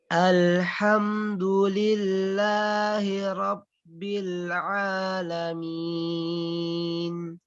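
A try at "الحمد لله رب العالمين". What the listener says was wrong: Oke, roknya kurang tebal, nggak apa-apa. Oke, perlu diperhatikan ketika ra bibirnya tidak harus maju ya. Terus ditebalkan juga.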